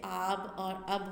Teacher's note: اب ایک الف کی آواز آئے گی، لیکن جب ہم آب لکھیں گے تو یہ تھوڑا سا کھینچ کے پڑھیں گے